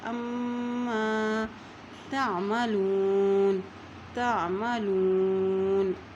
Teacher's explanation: یہاں دیکھیں عین کی زبر کو میم کے ساتھ ملاتے ہوئے پڑھیں گے کیونکہ میم کے اوپر شد ہے، اور جب میم کے اوپر شد آ جاتی ہے وہاں پر غنہ ادا کیا جاتا ہے